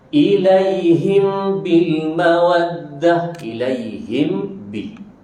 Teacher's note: Matikan mim dan ambil ba terus tanpa dengung.